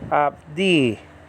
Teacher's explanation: the emphasis is on the second syllable, and then that's a D, that's a dalet in Hebrew, and then you have the yod acting like a vowel, all right, after that.